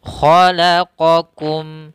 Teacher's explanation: Qa dari pangkal lidah juga, kedua-duanya memang dari pangkal lidah, tapi qaf lebih terangkat ya, karena dia ada sifat isti'la'nya, pangkal lidahnya harus terangkat. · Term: huruf qaf